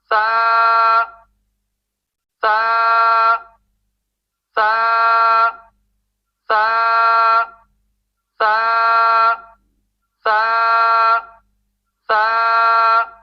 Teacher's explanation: سا سا اس کے بعد سا کے آخر میں ہونٹ بند نہیں کریں گے، کیونکہ ہونٹ بند کریں گے تو الف سیدہ نہیں ہوگا، سیدہ نہیں ہوگا تو آپ کا سا بھی درست نہیں ہوگا۔ اس کے بعد سا کے الف مدہ کو صرف ایک الف لمبا کریں گے۔ سا سا سا سا سا سا سا سا کو ادا کرتے ہوئے نوک زبان پھسلنے نہ پائے۔